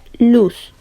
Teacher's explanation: el ápice de la lengua va a tocar los alveolos situados tras los dientes superiores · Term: alveolares